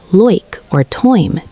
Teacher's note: The Australian I sound in words like like or time sounds more like loik or toime to British ears.